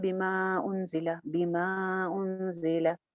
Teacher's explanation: हमजा की वजह से आने वाली मद को दो अलिफ लंबा करके पढ़ेंगे